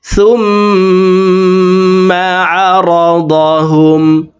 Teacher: পেশওয়ালা সাটি তাসদিদওয়ালা মিমের সাথে 3 সেকেন্ড পরিমাণ গুন্নাহ করে পড়ব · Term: ওয়াজিব গুন্না